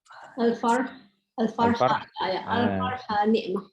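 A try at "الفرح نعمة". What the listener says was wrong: Al-farh ni'mah. Jangan sambung, cakap jangan sambung please. Jangan sambung. Al-farh ni'mah. Kita bercakap al-farhu, al-farha, al-farhi. Jadi pelik sangat. Dia jadi pelik. Al-farh ni'mah.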